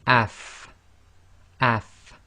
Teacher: you should really be able to feel your teeth coming together your upper teeth coming together with the inside of your bottom lips